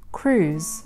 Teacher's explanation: the vowel is a long oo sound and the last consonant is a z sound.